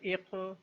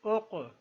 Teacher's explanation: قوف بھی قلقلہ حرف ہے اور اس کے اوپر جزم ہے، قلقلہ کی آواز پیدا ہوگی